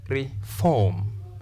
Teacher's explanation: We stress the second syllable.